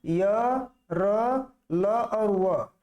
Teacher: अंतस्थ व्यंजन हमेशा क्या होते हैं, अल्प प्राण होते हैं, क्योंकि उनका उच्चारण करते समय कम ऊर्जा, कम वायु और कम श्वास की आवश्यकता होती है